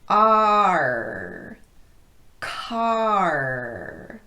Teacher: you have an a sound in front of that R so your tongue will drop for the a sound but then it needs to come right back up high and make contact with those teeth for the IR sound